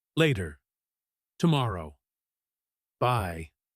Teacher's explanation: Notice how everyone ends with a falling tone. · hearing that drop in pitch tells you that you don't need to listen for a response. It is the period at the end of the paragraph.